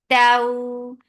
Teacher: This is lean, so make it soft and make it 2 counts long.